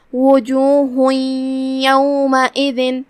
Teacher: ادغام کا معنی ہے حرف کو حرف میں داخل کر دینا، تو ہم یہ تنوین کو یا میں داخل کر کے غنہ کے ساتھ اور تشدید کے ساتھ یہ حکم کو ادا کریں گے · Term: ادغام بغنہ